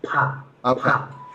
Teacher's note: the aspirated consonants like pa, pa. So the air comes out. But in Japanese, the air hardly comes out when we speak.